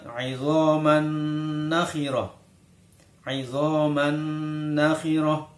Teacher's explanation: maka suara tanwin masuk ke huruf nun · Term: Idgham Bighunnah